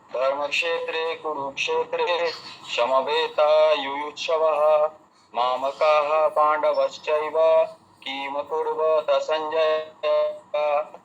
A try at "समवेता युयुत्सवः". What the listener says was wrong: হ্যাঁ, ইয়ুত সাবাহা, ওখানে তালু সয়ের উচ্চারণ হয়ে গেছে। সাবাহা বলুন, ইয়ুত সাবাহা, সাবাহা।